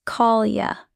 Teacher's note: In call you, the Y often blends, call ya.